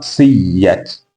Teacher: Hakadha siat, tazamo uliopita ulikuwa ni siat, lakini hapa tumeibadilisha hamza tamam kulingana na herufi iliyopo kabla yake ambayo ni ya, na yenyewe itakuwa ni ya, kisha zitaingizwa kwa pamoja, zitafanyiwa idgham, kwa hiyo inakuwa siyat.